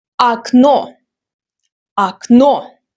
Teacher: Second rule, unstressed O. When O is unstressed, it's pronounced as A.